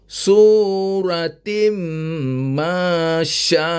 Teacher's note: mad wajib muttasil dan wajib dibaca lima harakat macam mana nak baca lima Har deat kita ketuklah S ini